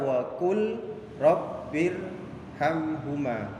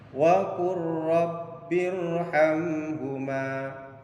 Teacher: Jadi suara lamnya masuk kepada ra. · Jadi lamnya hilang masuk kepada huruf ra. Pak Guru contohkan lagi yang huruf lam sukun bertemu dengan huruf ra. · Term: idgham mutaqaribain